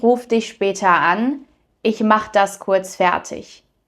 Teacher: the E at the verb is often not pronounced when we're speaking fast, but in written German, you'll need to add it.